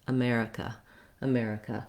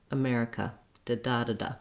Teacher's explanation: I also often hear in longer words that people may be too even across the syllables in terms of how long they hold them. You really want the mare to be long and the others to be short.